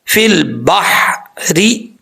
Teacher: اس کا ساؤنڈ آئے گا فل بحری، بحری نہیں پڑھنا، بھاری ساؤنڈ کے ساتھ نہیں پڑھیں گے، بریک ہا کلیئر ساؤنڈ کے ساتھ